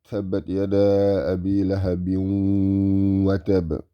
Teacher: This is Tanween, followed by a Waw, making it Idgham.